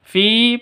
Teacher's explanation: Fi terdiri dari dua hitungan karena ya sakin yang didahului oleh kasrah, Mad Asli.